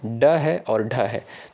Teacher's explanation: ये आपका हो जाएगा मुर्धा से उच्चारित होने वाला वर्ड